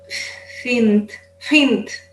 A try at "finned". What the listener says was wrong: Yeah, you want to make sure that you have your voice in that D. Finned, not fint, finned.